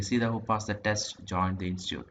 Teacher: the tone will be rising and when you come towards the end of the sentence the tone will fall